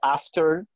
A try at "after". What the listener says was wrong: No, after. You mean making the T silent? Like in often, O-F-T-E-N? Yeah, only in often. But most British people seems like say often, and many North Americans say often, but you cannot forget the T in after.